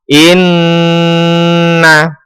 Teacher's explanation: hukum bacaan atau tajwidnya adalah hunah musyaddadah cara membacanya adalah berdengung yang lama